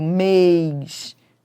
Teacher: Mês tem timbre fechado.